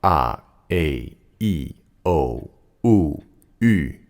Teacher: The vowels like a, I, o, u, ü sound different from each other because their overtone packages are different. The round, darker vowels like u, o, and a have lower harmonics, whereas the sharper vowels like ü and I have higher overtones.